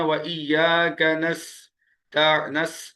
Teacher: سیٹی کی آواز نکلے گی، سختی سے پڑا جائے گا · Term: سیٹی والے حروف